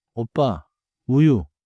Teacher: Small circle for 오, tighter circle for 우. · Keep the lip circle — don't flatten it toward 어, and don't diphthongize it like English 'oh'. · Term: Back rounded pair